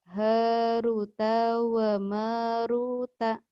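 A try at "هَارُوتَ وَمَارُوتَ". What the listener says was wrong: Wa marutanya benar. Yang pertamanya tuh panjang juga. Haruta wa maruta.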